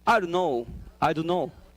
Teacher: Then you, yeah, omit the T sound. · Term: elision